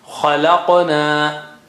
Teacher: Kha is high sounding, then la is low, and qaf is qalqala and high sounding, okay, and na is low.